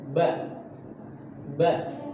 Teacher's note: Huruf ba itu kan makhrajnya dari bibir.